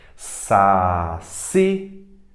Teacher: Mais forte é o si, oxítona.